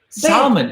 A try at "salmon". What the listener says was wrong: Salmon. The L is silent.